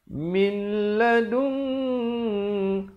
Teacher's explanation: Da'iz hadaitana, hadaitana, wahab, ada pantulan di sini. Lana min, idgham bila gunnah, masuk tanpa dengung